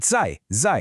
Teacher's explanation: Now for zai zai, that's a fourth tone. It needs to be a sharp, decisive drop in your pitch.